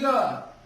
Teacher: अंतस्थ कहते हैं जिसमें श्वास का अवरोध जो होता है बहुत कम होता है। जैसे य, इसमें कोई अवरोध ही पैदा नहीं हो रहा या कम पैदा होता है।